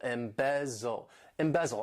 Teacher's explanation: This verb has 3 syllables and the stress is on that second syllable.